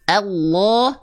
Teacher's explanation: Ya, tapi saya juga ingin menyampaikan kalau tebal tuh bunyinya begini. Allah tebal karena pangkal lidah naik. Bukan terletak di ujung lidah.